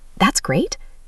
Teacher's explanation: With rising intonation showing surprise.